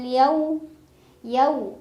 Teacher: ada harf Lin karena ada wau sukun sebelumnya fathah dibacanya cukup dilunakkan